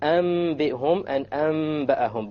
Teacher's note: You convert the noon to the meme with a ghunna. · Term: iqlab